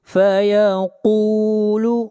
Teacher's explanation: قاف حروف مستعلیہ میں سے ہے، قاف کو موٹا پڑھیں گے